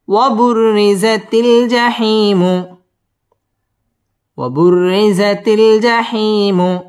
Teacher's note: ওয়াও ঠোঁট গোল করিয়া উচ্চারণ করতে হবে। ওয়াবুররি র বারিক হবে।